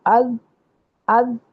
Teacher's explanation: حمزہ زبر زال از. از از کرتے ہیں تو آپ کی زبان جو ہے نا وہ دانتوں کے کنارے پہ آ کے رک رہی ہے